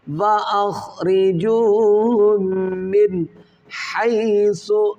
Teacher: نون ساکن کے بعد حروف حلقی میں حا ہے، تو یہاں پر ہم غنہ نہیں کریں گے نون کے اندر، یا اظہار کر کے پڑھیں گے، ظاہر کر کے پڑھیں گے۔